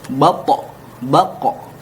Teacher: Sedangkan to dan qaf dikarenakan keduanya adalah huruf isti'la yang ketika diucapkan lidah terangkat ke atas, maka mantulnya adalah ke o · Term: qalqalah